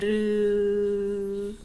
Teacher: 유음은 알 생각하시면 돼요. 혀의 양옆으로 공기가 흘러나오면서 안에서 울리죠.